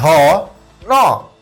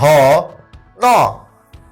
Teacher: আপনার ন টা কিন্তু নাকের সাহায্যে উচ্চারিত হচ্ছে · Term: নাসিক্য